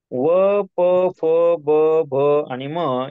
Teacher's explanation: आपले दोन्ही होठ मस्त आपोआप जवळ येतात आणि मग आपण हे उच्चार करतो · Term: ओष्ठ्य वर्ण